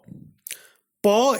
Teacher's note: Pa is a voiceless bilabial plosive.